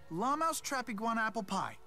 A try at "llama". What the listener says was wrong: pronounces llama as lamau?